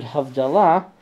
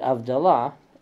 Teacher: In the case of the word Havdalah, the Yanina Jews pronounced it Avdalah, because they didn't have the H.